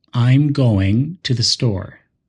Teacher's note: I'm going and store are stronger while to and the are quicker and softer this creates a smooth flow almost like music it's English Rhythm